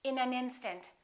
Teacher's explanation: we would connect the final consonant to the next vowel so this n in this a would be said together listen